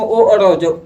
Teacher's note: जैसे में ओ और औ, जब ओ और औ के उच्चारण करेगा ना तो कंठ और ओष्ठ से उच्चारण आएगा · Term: कंठोष वर्ण